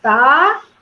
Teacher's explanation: A sílaba mais forte, a última.